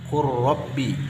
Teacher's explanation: Nakhluqkum, huruf qaf yang sukun bertemu dengan huruf kaf. Qur rabbi, huruf lam bertemu dengan ra, sehingga lamnya tidak dibaca. Ini huruf qaf yang tidak dibaca, ini huruf lam yang tidak dibaca, langsung idgham kepada ra. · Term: idgham mutaqariban